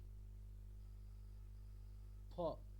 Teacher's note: এবার আপনি খেয়াল করে দেখুন, আপনি যখন একটা পুরো ফকার বলছেন তখন আপনি কেমনভাবে বলছেন, পুরো ফকারটা কেমন হচ্ছে, ফ, অর্থাৎ দুটো ওষ্ঠ পুরোপুরি আপনি টাচ করছেন